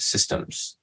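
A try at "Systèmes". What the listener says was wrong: An E between it's Systemes.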